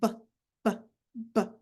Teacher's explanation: that's a voice sound because your vocal cords are vibrating